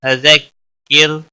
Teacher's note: را ساکن سے پہلے زیر ہے، اس لیے را کو باریک پڑھیں گے